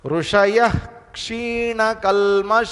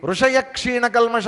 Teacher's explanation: ఇప్పుడు ఏమవుతుందంటే ఋషయః అని పూర్తిగాను అనలేము. పూర్తిగా అనకుండా వదిలేసామనుకోండి ఋషయ క్షీణకల్మష అయిపోద్ది, విసర్గ ఎగిరిపోతుంది. · ఇక్కడ మధ్యలో ఋషయః విసర్గం ఉంది, కొంచెం పలకాలి దాన్ని, తప్పదు.